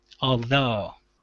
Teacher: So the stress is at the end of the word